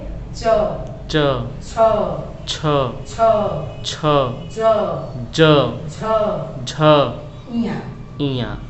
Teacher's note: तालु हमारा जो बहुत मुख में जो है बहुत सुरक्षित स्थान है, यह जीभ के ऊपर होता है तालु। तो च, च, इसमें जो है जीभ से तालु का स्पर्श हो रहा है।